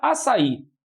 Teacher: é uma oxítona última sílaba mais forte